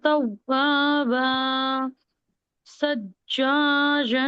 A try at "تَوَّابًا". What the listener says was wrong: نہیں نہیں نہیں نہیں نہیں نہیں، یہ پورے چار الگ الگ ورڈز ہیں، الگ الگ پڑھیے اس کو.